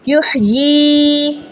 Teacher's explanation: یحیی کھڑی زیر ہے، 1 سیکنڈ کے لیے کھینچیں گے، ہا کی آواز حلق کے درمیان سے نکلے گی۔